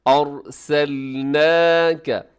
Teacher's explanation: اس میں را کو اپنے موٹا رکھنا ہے، کیونکہ را ساکن سے پہلے زبر آ گئی ہے۔